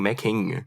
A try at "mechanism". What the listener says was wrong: you're adding like an ing it's like you're like mechm mechanism